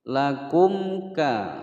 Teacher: ada mim sukun yang tidak bertemu dengan huruf mim atau ba, maka dia dibaca dengan jelas, tidak digunnahkan ya